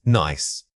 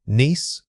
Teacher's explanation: the first word uses a short, quick vowel sound, while the second requires you to hold that e sound longer and spread your lips more widely